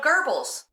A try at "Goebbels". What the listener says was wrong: It's Goebbels. There's no R in Goebbels, like in gerbils. Imagine you're saying gerbils in an English accent. Goebbels.